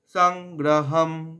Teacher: সং এখানে অনস্বরটা উঙ্গ উচ্চারণ হবে